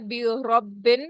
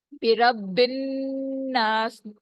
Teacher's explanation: بربن نون پہ تشدید ہے, نون مشدد ہے. یہاں نون پہ آواز کو آپ نے 2 کاؤنٹس تک سٹے کروانا ہے, اس کو کہتے ہیں غنہ کرنا